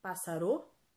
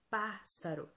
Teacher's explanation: alta pássaro pássaro será que é passar o não é pássaro então a antepenúltima sílaba é a mais forte então circule aí a antepenúltima sílaba é a antepenúltima sílaba pássaro